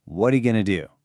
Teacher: that one single stressed word do is actually held longer than the first four words all put together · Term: stress timed language